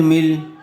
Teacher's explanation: ادغام لام، میم لام زیر مل۔ دیکھیے نون ساکن کے بعد یرملون میں سے لام آیا ہوا ہے، اس لیے بغیر غننے کے ملا کر پڑھیں گے